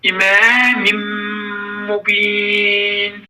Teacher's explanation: Burada yenə nun hərfi mim hərfinə çatdı və burada nun hərfi mim hərfinə çatdığı üçün burada ona baş verdi və nun hərfi gizlənərək mim hərfi şiddətli deyilir